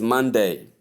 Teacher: Stress the first syllable